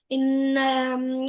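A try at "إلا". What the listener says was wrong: ان نہیں ہے، ال ہے، ال، حمزہ کو لام سے ملانا ہے۔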